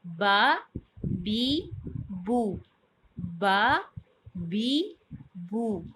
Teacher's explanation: اس کے بعد با، با ہوتی ہے بند ہونٹوں کے گیلے حصے سے ادا ہوتی ہے. اس کو اطباق شفتین کہتے ہیں، مطلب اس کو اور میم کو اطباق شفتین کہتے ہیں اور اس کو انضمام شفتین کہتے ہیں، یعنی کہ منہ کا گول ہونا.